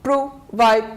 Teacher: two syllables so we stress on the second syllable